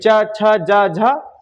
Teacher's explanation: ठीक, अब तालु व्यंजन क्या है कि जो जीभ का सिरा है ना, वो ताल में टच होगा, चा छा, तो वो क्या है, उसमें ऊपर चिपकेगी जीभ, चा छा जा झा यहाँ, वो पढ़ते ही पता चल जाएगी ये ताल में टच हो रही।